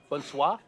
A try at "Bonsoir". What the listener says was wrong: Bonsoir. Just don't forget there's an R. Bonsoir.